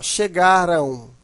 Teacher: veja que esse M ele tem um som de u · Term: semivogal